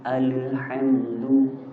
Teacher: Kebanyakan orang ketika di al itu dia mantul. Padahal di situ huruf lam itu bukan qalqalah. Jadinya alhamdu.